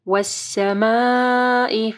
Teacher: کو موٹا پڑھنا، یغشاها، والسماء وما بناها، والسماء، یہاں پہ دیکھیں مد ہے، اس کے بعد حمزہ ہے، تو 4 سے 5 حرکات کے برابر اس کو لمبا کرنا ہے